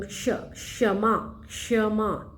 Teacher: पहले कौन सा ध्वनि आ रहा है, क का आ रहा है, फिर श का आ रहा है, इसलिए हम श को कैसे लिखते हैं, क हलंत अधूरा प्लस श, क्ष। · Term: संयुक्त व्यंजन